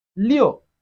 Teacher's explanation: it has the falling tone of Chinese language, which is also the fourth tone.